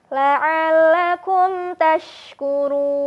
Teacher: huruf mim sukunnya bertemu dengan huruf ta. Nah, untuk ini tidak ditahan dulu sahabat. Jadi huruf mim sukunnya cukup dialirkan saja.